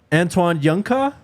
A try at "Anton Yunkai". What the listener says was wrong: First of all, you even got its first name wrong. You said Antoine. Anton Yunkai is how I would pronounce it.